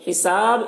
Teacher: حساب یہاں پر با میں قلقلہ کریں گے وقف کی صورت میں